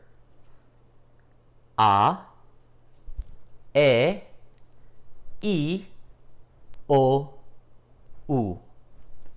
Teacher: notice my mouth does not move in the middle of the letters that's what makes them pure